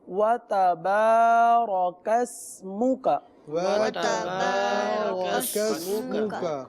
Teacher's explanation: اب یہاں پر واو تا با الف زبر با, وَتَبَا با کو کھینچ کے پڑھیں گے. اور رَكَسْمُكَ را کو موٹا کر کے پڑھیں گے, کاف کو سین کے ساتھ سیٹی کی آواز.